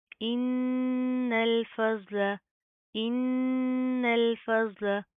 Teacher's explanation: ज़ोत को भी प्रॉपर मुंह को पुर करके पढ़ेंगे, मोटा पढ़ा जाएगा। इन्नल फज़्ल, इन्नल फज़्ल, फा और लाम बारीक, ज़ोत मोटा।